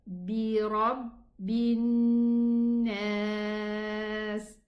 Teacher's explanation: because of the stopping, I can extend this alif, harful mad, 2 counts, but with conditions, 4 counts or 6 counts. And in general, I choose to read it 4 counts because it's easier for all of us, inshallah. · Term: Mad aarid lis-sukun